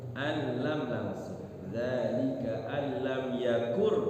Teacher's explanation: Alam di situ ada idgham bila gunnah, nun sukun bertemu lam.